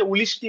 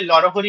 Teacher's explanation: ন স্থানে অর্থাৎ দন্তন্য স্থানে ল এর উচ্চারণ হয়